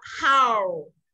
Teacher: Rộng miệng ra xong đến chữ U trụ lại